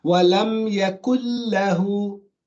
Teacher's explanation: The complete merge, wherein the first letter is completely gone. It's completely gone from the recitation. And you hear the second letter, only the second letter with the shadda.